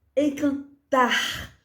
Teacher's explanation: Encantar, tar é mais forte. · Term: sílaba tônica